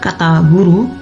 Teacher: udara mengalir melalui rongga mulut dengan lidah bergetar · udara dihentikan di belakang oleh pangkal lidah yang menempel pada langit-langit lunak kemudian dilepaskan dengan getaran pita suara